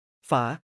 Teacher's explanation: In some parts of central Thailand, the kw or gw sound magically transforms into an f sound. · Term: kw becomes f